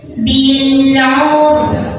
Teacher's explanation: Ra sukun dibaca secara tafkhim karena huruf sebelumnya dhammah, jadi tebal maka lidah naikkan